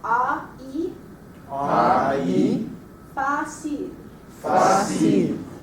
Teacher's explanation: we're going from a very wide to a very narrow